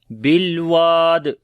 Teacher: واو کو لمبا کریں گے، الف مدہ ہے، اور جب رکیں گے تو دال کے اوپر قلقلہ ہوگا